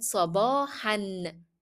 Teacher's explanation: I pronounced it an, which is the tanween, though I stopped on the word. This is against the rule which is saying once you stop, you drop.